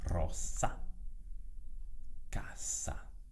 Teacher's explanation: Quando è doppia, quindi quando è seguita da un'altra S o preceduta da un'altra S, come preferisci, si pronuncia ovviamente S, quindi sorda